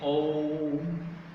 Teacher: ओ को थोड़ा लंबा खींचना पड़ता है, 3 बार बोलना पड़ता है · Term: प्लुत स्वर